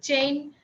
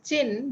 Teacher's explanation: chain is pronounced as chin because Japanese do not prefer a diphthong. It has certain diphthongs, but it doesn't like in loan words.